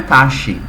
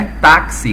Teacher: a nossa pronúncia não é taxi, tá? É táxi com som de KS, tá? Então, táxi é uma paroxia terminada em i.